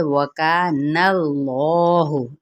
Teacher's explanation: اس میں جلالہ کا لام پر پڑا جائے گا کیونکہ پیچھے فتحہ ہے